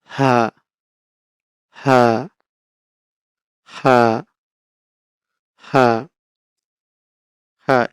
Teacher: এই হা উচ্চারণ করবো কোথা থেকে আমরা হলকের শুরু হতে